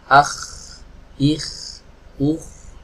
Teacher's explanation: ketika mengucapkan huruf k ada nafas yang ikut mengalir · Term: sifat hams